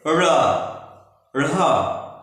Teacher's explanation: हमारी जीवा ऊपर की ओर उछल करके जाकर के मूर्धा को टच करती है और फिर तुरंत वापस पलट जाती है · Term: उच्छिष्ट व्यंजन